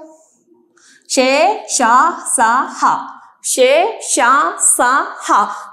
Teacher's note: మనము ఇవి పలికినప్పుడు కొంచెం శ్వాస అనేది ఊదినట్టు కనిపిస్తుంది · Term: ఊష్మములు